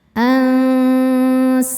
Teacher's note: Cara membacanya nun ini dibunyikan samar-samar menuju huruf sin disertai dengung. Jadi makhraj huruf kita sudah menyentuh sin. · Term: ikhfa hakiki